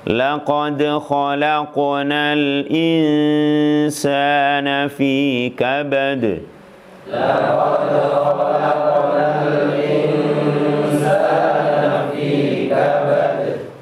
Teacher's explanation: dal qalqalah, qaf qalqalah, tapi beda ketebalannya